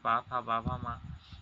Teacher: ओष्ठ का मतलब हुआ प फ ब भ म ये सभी ओष्ट स्पर्शी व्यंजन है